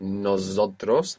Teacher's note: Most English speakers find themselves accidentally saying nosotros with a Z.